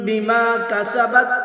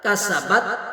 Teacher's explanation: کاف باریک پڑھیں گے، سین کو سختی سے ادا کریں گے سیٹی کے ساتھ